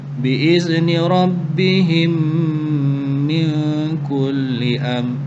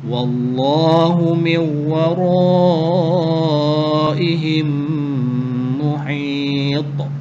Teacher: pertemuan antara huruf mim sakinah dengan huruf mim dan dibaca secara dengung dengan kadar 2 harakat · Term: idgham mithlain